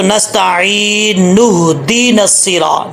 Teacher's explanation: جب اس کو ملا کے پڑھیں گے تو نون کو ہا سے ملائیں گے